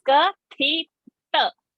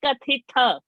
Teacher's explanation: The ta is alpa prana and the tha is a mahaprana.